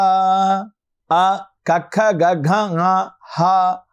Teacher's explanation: విధముగా వచ్చేటువంటి అచ్చులు హల్లులు అకుహ విసర్జనీయానాం కంఠః అ కఖ గ హ అకుహ విసర్జనీయానాం కంఠః ఇవి కంఠము నుండి పలకబడుతూ ఉన్నాయి.